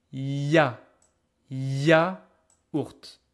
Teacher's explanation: So you can see ya, it's kind of a E, but there's kind of a consonant sound as well. It's half-half. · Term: Y as a consonant